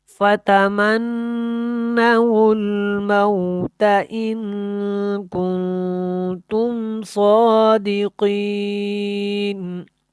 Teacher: صادقین، صاد پر ہے، موٹا ہے، قاف بھی یہاں پہ موٹا ہے۔